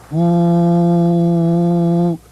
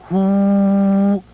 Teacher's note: The sound to cleanse and heal the spleen is Hu, like the English word who, but with a stronger exhalation of breath